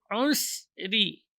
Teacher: Ra di sini dibaca tipis karena berharokat kasrah.